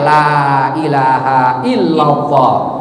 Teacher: Itu kan istisna, illallah, la ilaha illallah, la ilaha illallah, tekankan ya. Terus la-nya panjangkan, la minimal 2 harakat lamnya, minimal itu 2 harakat lamnya, la ilaha illallah, maksimal 6 harakat, la ilaha illallah, katanya.